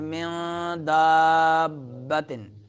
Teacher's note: نون ساکن کے بعد حروف اخفا میں سے دال آ رہا ہے تو اخفا ہوگا، نون کو چھپائیں گے ناک میں، من دابتن۔ با مشدد ہے اور مد ہے، مد کریں گے اس کلمے میں اور با مشدد پڑھیں گے۔